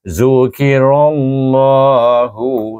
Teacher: Dan oleh kerana ra berbaris alif, maka dibaca dengan tebal. Ra sendiri pun sudah bertebal.